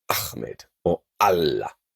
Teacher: When this silent awesome letter is used as a consonant, you close your throat off to block any sound, and then you release the sound when pronouncing the vowel. In fact, another way of looking at the letter is that it's a wide open mouth with a little plug in the middle.